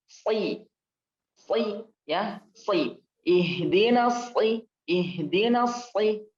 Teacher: ketika berharokat kasrah juga tebal · Ini prakteknya teman-teman kan kemarin udah belajar ya, tempatnya di mana ya, ini ujung lidah dengan gusi bawah ya, gigi seri bawah ini ya, bagian gusinya, jadi lidahnya ujungnya ke bawah. Oke, Tapi lidah bagian belakangnya dia naik karena isti'la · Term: sad